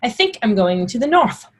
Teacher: a th sounds like the sound at the beginning of think an unvoiced th sound